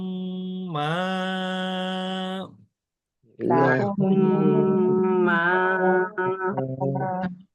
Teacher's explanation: এখানে গুন্না হবে কিন্তু এক আলিফ মাদের সমপরিমাণ